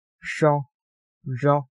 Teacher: 뒷 잇몸(후치경음)에서 나는 발음 ŝo, ĵo